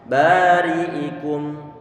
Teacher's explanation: Kalau ro kasroh berarti dia punya sifat tarqiq. Ro yang dikasrohkan dia tipis.